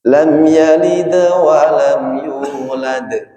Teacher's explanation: Jadi yalid wa lam yulad itu sama-sama jelas. Cuma di yulad itu pantulannya lebih jelas. · kalau qalqalahnya ketika waqaf atau qalqalahnya di akhir bacaan abyana, itu pantulan suaranya lebih jelas